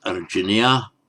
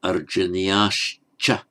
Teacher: On its own would be arjaniyah, but because it's followed by a cha, the visarga becomes a sh. So arjaniyascha.